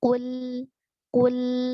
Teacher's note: huruf qaf keluar dari pangkal lidah. Nah, ini sifatnya adalah isti'la. Kita tafkhimkan, kita tebalkan, kemudian sembari kita monyongkan kedua bibir karena dia harokatnya dhammah. · U, ya, kemudian setelahnya adalah lam sukun, ya. Jadi kembalikan sedikit mulut kita setelah dhammah agar menjaga ketipisan huruf lam.